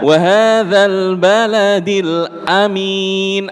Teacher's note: di surah at-Tin ngoten hanya berbeda satu pak a-nya pendek, mi-nya panjang